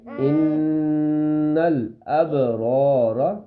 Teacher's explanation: نون کی آواز ناک میں چھپے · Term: غنہ